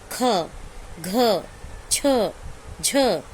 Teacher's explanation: तो स्पर्श व्यंजनों में प्रत्येक वर्ग का दूसरा और चौथा वर्ण तथा ऊष्म व्यंजन महाप्राण व्यंजन होते हैं। तो महाप्राण व्यंजन के उच्चारण में हकार ध्वनि विशेष रूप से सुनाई देती है